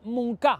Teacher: I per filar més prim, n'hi ha gent que fins i tot pronuncia Montcà, perquè sabem que la O en posició àtona en alguns dialectes es pronuncia com a U